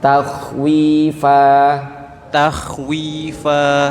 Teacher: Jadi kha itu rokhwah ya, agak panjang dia.